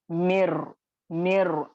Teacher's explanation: मिर नून को बिल्कुल हजफ कर दिया गया। ठीक है, हजफ कर दिया गया, पढ़ा नहीं जाएगा, डायरेक्टली मर्ज होगा।